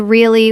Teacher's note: if I say the word really with a flat voice, it sounds bored.